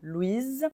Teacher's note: On prononçait Z avec le E final, Louise. Au masculin, le S est muet, Louis.